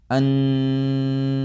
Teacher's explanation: آپ کی آواز جو ہے وہ خیشوم سے آتی جا رہی ہے اور وہیں پہ رکے گی جب آپ اس کو روکیں گے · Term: غنہ